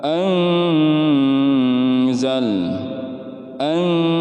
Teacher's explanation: Ikhfa artinya samar. Samar kemudian ditahan 3 sampai 4 harokat.